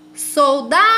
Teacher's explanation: Então, eu sei que a sílaba tônica da palavra soldado é a sílaba da.